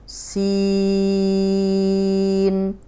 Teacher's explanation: سین میں سی کو لمبا کریں گے، سی کو جیسے انگلش کا سی ہے نا، اے بی سی، سی کو لمبا کریں گے، سین۔ اینڈ میں چھوٹی سی نون کی آواز آئے گی